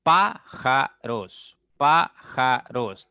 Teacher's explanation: la mayor intensidad, la mayor fuerza cae en pa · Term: sílaba tónica